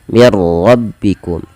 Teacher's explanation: Ra-nya di sini kita namakan dengan ra tafkhim karena ra tebal. Dia ra yang berharakat tasydid dan berharakat fathah.